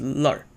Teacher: the lan or lan had an er suffixing, which is the most common thing of a Beijing dialect